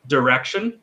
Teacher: So direction, in an American accent, that I is almost not pronounced. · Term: schwa